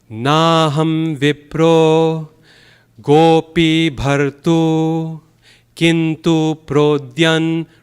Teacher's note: what gives us its beauty is that the first 4 syllables are very long.